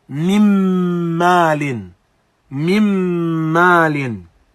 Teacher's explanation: Mim followed by noon as-sakina followed by mim. And so we go straight from the first meme to the second meme, bypassing the noon completely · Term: idgham